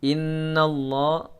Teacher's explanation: gunnah musyaddadah ditahan 2 harakat. Innallah. · Lam lamul jalalah mufakhamah, lam jalalah yaitu lam yang khusus berada di kata Allah. Dia dibaca tebal karena sebelum lafaz Allah ada huruf berharokat fathah. Ya, maka harus dibaca tebal, mufakhamah.